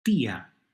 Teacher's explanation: So it goes from a one-syllable word with a diptongo to a two-syllable word. · Well, it does need a written accent, and the reason is that the stress is on the I. And I, being a weaker vowel, a closed vowel, needs to be helped out.